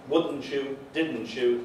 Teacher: The verb forms, wouldn't you, didn't you, they're regularly heard as assimilations, as reciprocal yod coalescent assimilations.